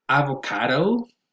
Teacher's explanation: here the stress goes on the third syllable. It has a secondary stress on a, so you might hear things like avocado, but then again, the primary stress goes on the third syllable.